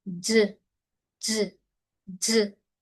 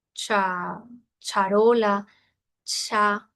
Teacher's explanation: la ZH es algo nuevo, no existe en español y es sin aire